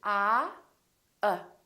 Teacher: my lips are neutral oh they're not doing it very much and my tongue is also neutral in the back uh but everything is relaxed there's hardly any movement in my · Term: neutral sound